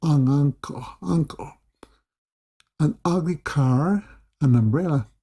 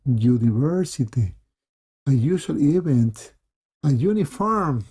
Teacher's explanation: Y vas a usar a cuando el sustantivo comienza con sonido, aunque tienes la U, pero la U suena como you. sonido de diptongo